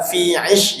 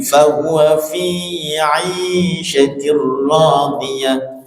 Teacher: tapi fi nya panjang, ada matnya.